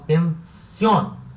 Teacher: pensión é uma palavra oxítona, ou seja, a sílaba tônica é a última, son, e termina em N.